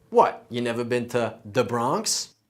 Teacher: if a word starts or ends with a th sound, we're going to turn that into a dental duh or tuh. So the becomes duh. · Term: hard TH sound